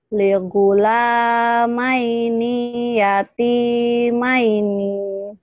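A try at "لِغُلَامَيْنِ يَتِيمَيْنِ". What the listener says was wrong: Ninya pendek. Ligulamaini yatimaini. Yuk, pendek nih.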